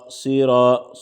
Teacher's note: صاد موٹا پڑھیں گے، اور را پر بھی چونکہ زبر ہے تو را بھی موٹا پڑھا جائے گا